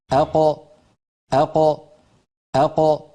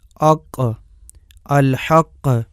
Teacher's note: قاف کا مخرج، اق، اق، اق، زبان کی انتہا اور گوشت والے نرم تالو سے قاف ادا ہوتی ہے